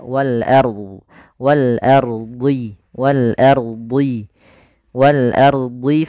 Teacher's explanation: pada lafal wal ardi, a-nya tipis, ro-nya tebal. Nah, jangan ar, tapi dia wal ardi. · a-nya tipis rnya tebal